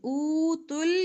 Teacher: حمزہ پیش واو او واو مدہ لمبا کریں گے